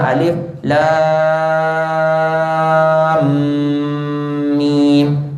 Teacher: Kalau tuan-tuan mula alif lam mim pun sama juga. Yang panjang tu lam, panjang 6 harakat. Tapi dengungnya 2 harakat. Ya, kalau alif lam mim tak cukup dengung.